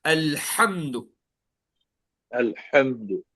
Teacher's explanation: الحمد الحمد ہا حلق سے الحمد پڑھتے الحمد، ٹھیک ہے؟ الحمد حمد آپ تھوڑا اسٹریس فورس کر کے اسٹریس ڈال کے حلق سے پڑھیں گے